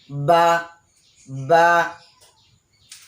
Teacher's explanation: বাটা হচ্ছে যখন বা উচ্চারণ করব, তখন ঠোঁটের বিজা অংশ, ঠোঁটের বেজা অংশ থেকে বা উচ্চারণ হবে।